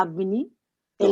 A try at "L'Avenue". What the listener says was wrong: No, connected.